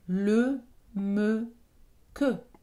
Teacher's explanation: Cette voyelle est particulière parce qu'elle est centrale. Elle n'est ni ouverte, ni fermée, ni antérieure, ni postérieure. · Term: schwa